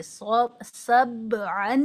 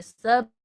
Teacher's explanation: तनवीन की आवाज को नाक में छुपा कर गुने के साथ पढ़ते हैं नाक में छुपाने का मतलब यह है जबान की नोक ऊपर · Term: इफा